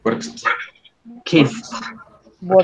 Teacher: Como si después de la K siguiera inmediatamente la T en el caso de work. Y como si después de la S en el caso de kiss siguiera inmediatamente la T. Nunca suena esta E.